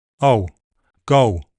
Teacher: It's to the back in Manchester.